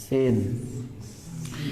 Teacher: Ujung lidah bertemu dengan dinding gigi saya di bawah.